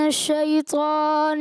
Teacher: صفت استعلا تو ادا ہوا لیکن صفت اطباق ادا نہ ہو سکی، یعنی مکمل پر ادا نہ ہوا